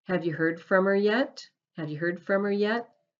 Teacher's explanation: The H sound is missing. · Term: silent H